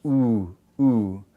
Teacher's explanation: Then the last one is lips are very closed, and therefore it's our closed long